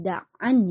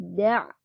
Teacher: di sini dibacanya bukan Daan ya tapi daa ini termasuk Mad iwad jadi fathah tanwinnya dia berubah jadi fathah atau jadi Mad thii